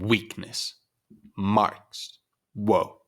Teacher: clearly there is a stress on the first syllable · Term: inverted